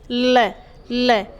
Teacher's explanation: अब देखो पार्श्विक वर्ण, पार्श्विक, पार्श्विक वर्ण का मतलब होता है, देखो जिसका उच्चारण करते हैं ना तो उच्चारण करते समय जो हवा है वो कहाँ से निकल जाए? पार्श्व से, यानी बगल से निकल जाए। गाल के बगल से, अंदर से, जो दांतों के बाहर और गाल के अंदर से बगल से निकलती है